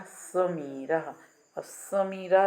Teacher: जीव का अगला हिस्सा जो है दांतों को स्पर्श करता है। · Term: दंत्या